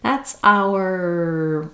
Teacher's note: I use the full our because I need time and I want to keep that clear vowel